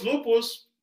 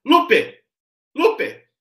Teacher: Essa forma diferente de mudar o vocalismo, de mudar a vogal, para uma vogal aberta que é mais expletiva, o nome que a gente dá para isso é vocativo.